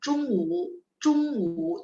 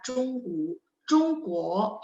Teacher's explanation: Jadi memang O bunyinya sedikit ke U ya.